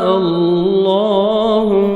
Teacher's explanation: اللہ سبحانہ وتعالیٰ کے نام سے پہلے حمزہ زبر آ رہا ہے، آپ نے لام کو موٹا کرنا ہے